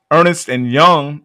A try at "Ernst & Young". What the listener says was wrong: They didn't misspell that. It's not Ernest and Young. It's Ernst Young, and I had to No, not Ernst. Just look at it. It's Ernst.